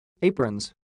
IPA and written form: 'eɪ.prən (Apron's)